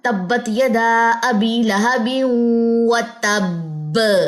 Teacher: کیونکہ وہاں پہ تشدید والا با آتا ہے تو اس وجہ سے وہاں پہ ہٹ کرتی ہے آواز بہت زوردار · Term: زوردار کلکلہ